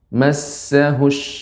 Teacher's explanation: Idza massahush. Sin yang bertasydid juga sifatnya hamus. Jadi banyak udara yang mengalir.